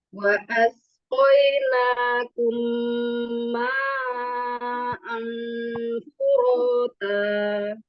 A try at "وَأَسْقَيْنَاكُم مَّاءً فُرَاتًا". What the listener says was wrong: Belum dapat lagi as. Coba as. Lebih keras lagi as. Nah, jadi desisnya kan ada desis tuh. Ada bunyi desis kan as. Nah, asnya itu lebih nyaring lagi. Bunyinya harus nyaring. As. Bukan dilamain, tapi lebih nyaring bunyinya. Wa asqainakum as. Jadi cara nyaringinnya kayak kalau dulu tuh iklan Pepsodent. Gigi kita tuh rapat bener. Jadi dia bunyinya nyaring.